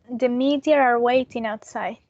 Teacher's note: it is an intrusive r because there is no r in the spelling